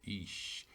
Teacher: the S, of course, is going to be slender, so it's ish